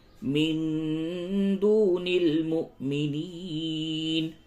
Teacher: لام زبر نل، لا يتخذ المؤمنون الکافرین اولیاء من دون المؤمنین، نون ساکن کے بعد دال ہے، اخفا کیجئے